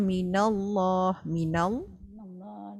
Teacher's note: lam lafaz jalallah dibaca tafkhim dan taglish.